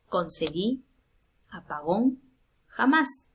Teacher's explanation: está la mayor fuerza de voz en la última sílaba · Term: agudas, palabras agudas u oxítonas